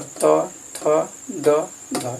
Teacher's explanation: त, थ, द, ध, इसका उच्चारण स्थान दंत है